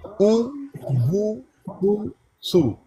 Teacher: जब पेश को पढ़ा जाए ना तो होंठों को गोल करते हैं